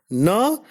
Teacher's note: Na is a voiced alveolar nasal.